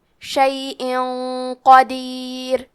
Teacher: اخفاء کا معنی ہے چھپا دینا، تو ہم تنوین کو چھپاتے ہوئے اور غنہ کے ساتھ یہ حکم کو ادا کریں گے. کیونکہ قاف حروف تفخیم میں سے ہے اور غنہ اپنے اگلے والے حرف کا حکم لیتا ہے تفخیم میں اور ترقیق میں، تو ہمیں یہ غنہ کو بھاری آواز میں ادا کرنا ہے. · کلمت قدیر میں حرف القاف کو ہم زبان کی جڑ اور تالو کے نرم حصے سے پڑھیں گے اور ہم یہ حرف کو موٹی آواز میں بھی پڑھیں گے.